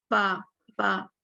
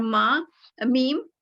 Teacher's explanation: होठों के गीले हिस्से से बा, बा, और माँ, मीम होठों की खुश्की से, इसलिए इसे बरी कहते हैं।